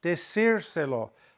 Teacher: I'm stressing the I.